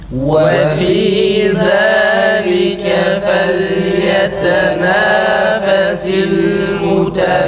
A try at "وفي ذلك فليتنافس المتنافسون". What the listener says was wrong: Esreler olmuyor arkadaşlar. Esreler hepsi eş şekilde çıkıyor.